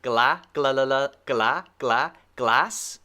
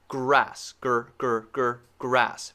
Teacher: the single sound is different l r glass grass glass grass remember the position for the l behind your teeth very narrow tongue and the r curled